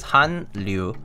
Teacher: the n sound here basically turns into an l when you put it with the l sound together